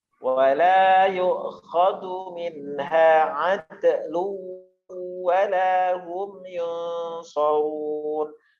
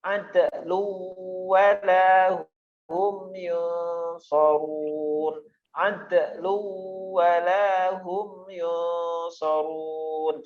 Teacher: Dalnya ad itu qalqalah tapi ringan